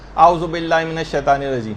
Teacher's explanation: اس میں نہ الف کا پتہ چلا، نہ عین کا پتہ چلا